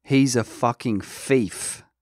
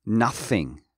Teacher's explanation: how the cockney say is instead of he's he is ease the th sound is often replaced by an F or a V in cockney